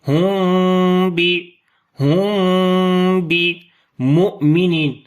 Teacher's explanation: ہم بمؤمنین، تو یہاں پر میم ساکن کے بعد با آ گیا تو اخفاء شفوی ہوگا، میم کی آواز کو چھپا کر پڑھیں گے، یعنی کہ سختی کے ساتھ ہونٹوں کو نہیں ملائیں گے، نرمی کے ساتھ ملائیں گے